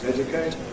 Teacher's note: this is characterized by having /dj/, not /ʤ/ and having more /ˈedjʊkeɪt/.